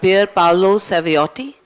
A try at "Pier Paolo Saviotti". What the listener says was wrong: Well, the only thing is there are two T's at the end, but that's very difficult for non-Italians to pronounce, Saviotti.